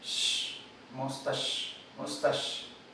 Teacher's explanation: la respuesta correcta es la sibilante posalveolar sorda